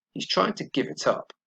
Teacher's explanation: Notice that it was unstressed, but the verb give and the particle up was stressed.